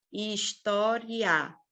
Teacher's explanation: O A, ele é mais forte que o I nesse caso. · Então, eu tenho um I, que ele é mais fraquinho, ele é uma semivogal, e eu tenho o A, que é uma vogal, que é forte. Então, até quando eu vou falar história, tem um movimento aí do som que ele é crescente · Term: ditongo